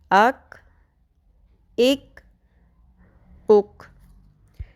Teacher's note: کش والی کاف کو ہم نے کلکلہ نہیں کرنا ہے · لحاظ کے قریب جو نرم تالو ہے بالکل اس کے یعنی کہ آگے سرے حلق کے اندر ہم نے زبان کی جڑ کو ٹکرانا ہے، اور جو کاف ہے کش والا کاف ہے اس میں تھوڑا سا آگے منہ کی جانب والا جو سخت حصہ ہے تالو کا اس کے ساتھ ٹکرائے گی